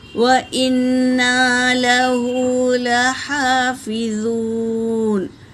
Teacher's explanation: نون پر تشدید ہے تو غنہ کرتے ہوئے 1 الف کے برابر کھینچیں گے